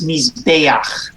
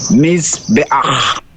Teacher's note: The accent rule, the pronunciation rule for the words that end in kamatz chet is the penultimate syllable gets the accent.